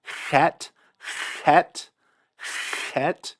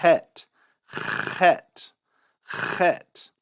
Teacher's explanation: you hear the friction, you hear the breath, but you don't really hear a trill. Some people pronounce the chet with a trill.